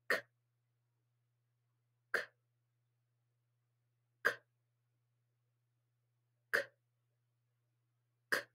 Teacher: So if this was the back of my tongue, it's kicking the air out. So this is an unvoiced back kicker.